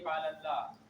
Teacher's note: لفظ اللہ پر تفخیم ہو رہی ہے